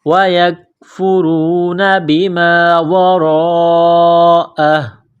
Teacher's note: جب وقف کریں گے تو ہا کو سائلنٹ کریں گے